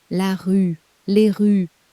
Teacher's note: The S is silent, of course it is. The article does all the work.